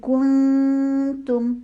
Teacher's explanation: ہونٹ گول کیے، لیکن آگے اخفاء کا رول آ رہا ہے، ہونٹوں کو سیدھا کر کے اخفاء کو ٹائم دینے کے بعد دوبارہ تا کی پیش کے لیے ہونٹ گول کیے